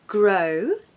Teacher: you really want that to sound very round like the letter O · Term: alphabet o